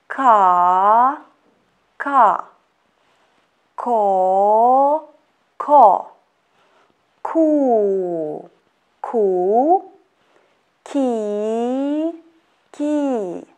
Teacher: ko is hard variant of letter ca how we pronounce it the back part of our tongue lifts and presses against the soft palate at the back of the mouth